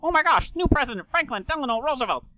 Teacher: some of those RS almost start getting dropped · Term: Transatlantic accent